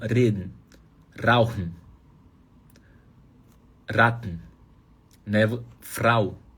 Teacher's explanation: Faz o R do Galvão Bueno, vibra na ponta da língua quando o R estiver antes de vogal.